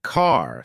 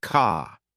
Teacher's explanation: American accent often uses a strong R sound. Words like car sound like car. British accent tends to soften the R, so car sounds more like car.